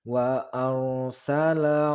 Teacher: pengucapan huruf ro sukun yaitu tafkhim atau tebal karena sebelumnya terdapat tanda baris atas atau fathah